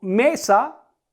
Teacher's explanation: en la sílaba en la que recargo la voz es me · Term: sílaba tónica